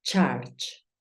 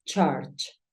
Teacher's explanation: Claro está que yo estoy haciendo el sonido de la U como una A, pero recuerda que es la intención, es como si dijeses una A, pero terminas diciendo una O